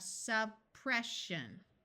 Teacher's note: So we have suppression, where once again, this S sound disappears because of the sh sound